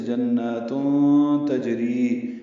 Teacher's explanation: جنات میں نون مشدد پہ غنہ ہے اور 2 حرکات لمبا کرنا ہے. تنوین ہے تا پر، اور اس کے بعد تا آنے کی وجہ سے جناتون تجری، یہ اخفا ہوگا.